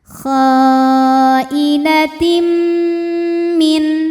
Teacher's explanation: Kemudian ada hukum idgham bunh kamil. Karena ada tanwin kasrah menghadapi huruf mim, maka bunyi tanwin dimasukkan ke mim. · Dengungnya dari mim. Karena yang tanwin sudah lebur ke mim masuk dengan sempurna. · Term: idgham bi gunnah kamil